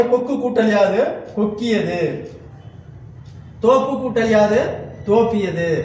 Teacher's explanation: குற்றியலுகரத்தில் உள்ள உகரம் இகரமாக மாறும். அந்த இகரம் தனக்குரிய ஒரு மாத்திரை அளவில் இருந்து குறைந்து அரை மாத்திரை அளவாக குறைந்து ஒலிக்கும். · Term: குற்றியலிகரம்